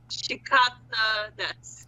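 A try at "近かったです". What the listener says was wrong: Chikakata. No. There's two kas there.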